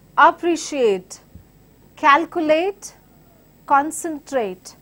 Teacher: Words, all these examples that I've been quoting are the words ending with ATE. Same rule book, they follow the stress pattern on antepenultimate syllable, that is last from the third